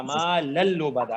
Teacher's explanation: آپ نے نون کو غائب کیا ہے, لام تو اپنی جگہ ہے نا · تو لام لام سے ملے گا